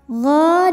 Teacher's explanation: Maka ghain ini kita panjangkan 2 harokat saja. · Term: mad tabi'i muqaddar